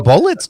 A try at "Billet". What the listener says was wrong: There's an I in there, so it's clearly not bullet.